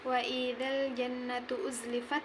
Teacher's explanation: gunnah karena nun bertasydid maka dibaca dengung.